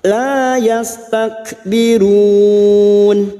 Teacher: bertemunya mat dengan huruf hidup yang dibaca wakaf mat arid li sukun 4 harokat kita panjangkan